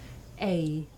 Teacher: this is a diphthong a double vowel sound the shape the mouth makes changes from the beginning of the sounds to the end